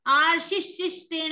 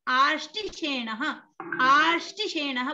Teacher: शकार के बीच में जो स्वर भक्ति है, उसमें उसको बोलने में बहुत कम समय लगेगा, आधी मात्रा से भी आधा समय लगेगा, अर्थात चौथाई हिस्सा लगेगा। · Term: ह्रस्व स्वर भक्ति